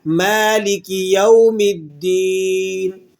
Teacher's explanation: میم پر کھڑا زبر ہے تو اسے ہم ایک الف کے برابر کھینچ کر پڑھنا چاہیے